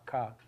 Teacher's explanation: So, for a K, your back of your tongue is hitting the back of your mouth. It's touching your velum.